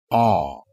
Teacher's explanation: It is a back vowel because the tongue moves backwards during its articulation. Ah. And ah is an unrounded vowel because its articulation is produced with the lips relaxed or unrounded. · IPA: ɑ